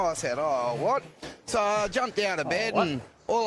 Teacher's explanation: he's using the syllabic N instead of saying and